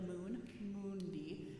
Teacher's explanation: keep on the vowel don't close to the N too soon think of it around Mo like the Moon Moon D and